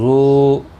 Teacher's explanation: ذو الف مدہ ہے، واو مدہ ہے، ایک الف کی مقدار کے برابر کھینچ کر پڑھیں گے